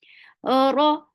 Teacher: Ra is heavy for fatha open jaws. Whenever ra is with fatha or dhamma, it is heavy.